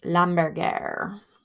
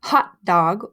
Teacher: French people don't do an aspirated H like we do to say hamburger or happy or hot dog. So you can tell if you're doing an aspirated H if you put your hand in front of your mouth, and then if you say like happy birthday hamburger, like you'll feel your breath on the H's.